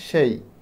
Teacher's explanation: এ যুক্ত স্বরধ্বনি উচ্চারণের সময় জিভ মূলত সামনের দিকে উঁচু হয় এবং ঠোঁটটা প্রসারিত হয় এবং সেই সময় ঠোঁট অল্প খোলে। তোমরা এটা উচ্চারণ করলেই বুঝতে পারো, যেমন সেই, এখানে ঠোঁট অল্প খুলতেছে।